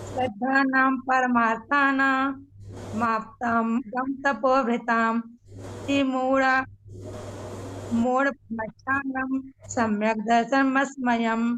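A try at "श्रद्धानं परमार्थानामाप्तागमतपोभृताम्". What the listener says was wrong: इसमें श्रद्धा नाम नहीं, बहुत से लोग श्रद्धा नाम कह रहे हैं,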